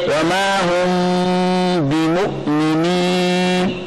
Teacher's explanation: मीम साकिन के बाद जब बा आ जाए तो गुन्ना करते वक्त मीम को नरमी से, बा को सख्ती से पढ़ें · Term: इख्फाए शफवी